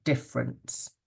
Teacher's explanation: So that first E sound, or that first letter E, is not spoken. It's in the spelling, but you don't hear it.